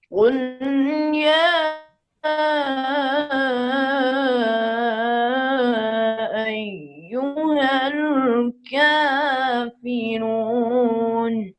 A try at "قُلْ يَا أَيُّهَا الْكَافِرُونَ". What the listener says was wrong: کافرون پر مد لمبی کریں، پھر پڑھیے۔ یا اوپر بھی درمیانی مد ہے۔ قل یا ایہا الکافرون، اس میں کافرون میں طول بھی جائز ہے، توسط بھی جائز ہے، قصر بھی، تینوں مقداریں جائز ہیں.